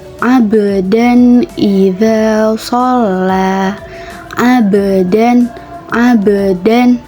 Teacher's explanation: Abdan terdapat huruf ba sukun yang mana posisinya berada di tengah ayat, maka huruf ba tersebut harus dibaca memantul. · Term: qalqalah sugro